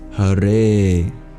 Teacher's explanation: H-A-R-E is how you transliterate that in English. The E is pronounced like A, and it's a double length, meaning that you pronounce it twice the time it would take you to normally pronounce any other syllable.